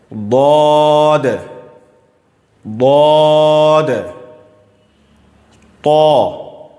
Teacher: زبان کا کنارہ داڑھ سے ملانا ہے. سائیڈ سے زبان کو داڑھ سے ٹچ کریں گے تو انشاءاللہ ضاد ادا ہو جائے گا.